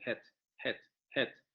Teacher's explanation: esa vocal semiabierta se va a pasar a una semicerrada